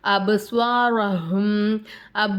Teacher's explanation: பா நமக்கு கலக்கலாவுடைய சட்டத்துல வரும் அப்ப நம்ம அசைச்சு ஓதணும்